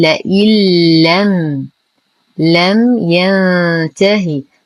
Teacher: لدينا نون ساكنة بعدها حرف اللام الحكم إدغام كامل تدخل النون دخولا كاملا في اللام فتسبب تشديدها